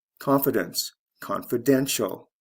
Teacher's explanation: First syllable to third syllable, stress shift.